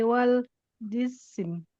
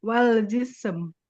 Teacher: Nah, sin ee setelah s jangan diberi huruf i kalau dibaca jangan jisi. Tapi jis langsung ke M. Jism.